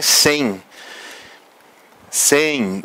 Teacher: quando se diz sem, o I quase desaparece. O E é o sustentáculo da sílaba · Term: ditongo